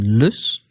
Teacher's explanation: the Dutch L as in l which is made just with the front of your tongue